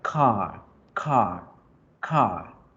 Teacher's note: La R no suena. Es una pequeña vibración que pasa cuando yo alargo las vocales. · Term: la vocal A larga